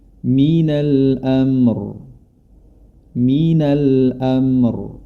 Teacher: pada kata Minal Amr kita berfokus pada kata Amr yang pertama kita awali dengan huruf ro yang dibaca tebal